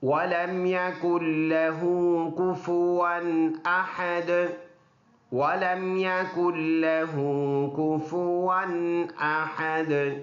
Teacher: لہو ہا سینے سے پڑھیں گے، ایک الف کی مقدار لمبا کر کے پڑھیں گے